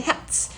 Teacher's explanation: 드스 하시면 안 돼요. 그리고 t로 끝나는 거 뒤에 s가 붙여도 츠 소리로 바뀌어요